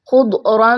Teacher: سب سے پہلے دیکھیں تو تنوین کے بعد میم ہے، ادغام مع الغنہ اچھے طریقے سے غنہ کرتے ہوئے پڑھیں گے. خا اور ضاد دونوں کو پر پڑھیں گے، اور را کے اوپر کوئی حرکت آ گئی اس وجہ سے اور را بھی موٹی پڑھی جائے گی.